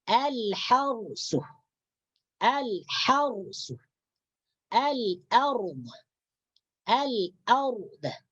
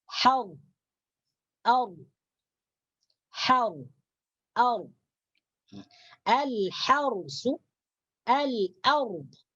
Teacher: Jadi ra sukunnya dibaca tebal. Dibaca tebal.